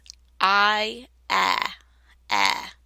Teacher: the I is pronounced with two sounds, and the starting sound is in the back of your mouth, not in the front of your mouth.